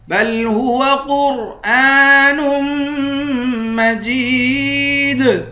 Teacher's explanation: نون کو میم سے ملا کر میم پر غنہ کریں گے